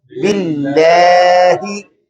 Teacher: तजवीद का उसूल और कायदा ये है कि जब हरफे लाम इसमें अल्लाह के अंदर पढ़ा जा रहा होता है और इससे पहले जेर हो तो उसको बारीक आवाज से पढ़ते हैं।